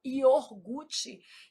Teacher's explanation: A gente às vezes desloca esse R, fala iorgute. Isso é um erro de ortoépia.